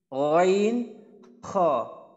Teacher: কণ্ঠনালী বা হলকের শেষ ভাগ হইতে